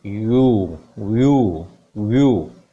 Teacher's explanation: वा sound, then this is या sound और फिर लॉन्ग साउंड ऑफ ऊ